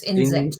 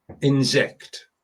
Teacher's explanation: So the emphasis is on the second syllable.